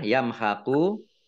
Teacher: mim sukun bertemu dengan huruf kha, bacaan izhar syafawi, dibaca jelas